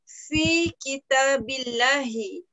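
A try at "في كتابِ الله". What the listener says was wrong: Ahsanti, barakallahu fiik.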